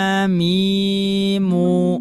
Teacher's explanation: Ketika kita mengucapkan huruf mim maka di situ terdapat makhraj asy-syafatan dan juga terdapat makhraj al-khayshum. Asy-syafatan disempurnakan oleh al-khayshum.